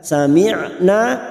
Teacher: Sebelumnya sami'na, huruf ain ini tawasud dan jahar. Sami'na, na fathah diikuti alif 2 harakat.